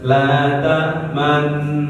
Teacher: Kita 2 harokat. Satu harokat monyong, satu harokat lagi kembali.